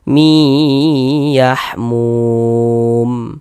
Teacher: di bagian miya itu suaranya itu kita tahan kita panjangkan sejenak sepanjang dua harakat. Mi yahmum mum dibaca panjang.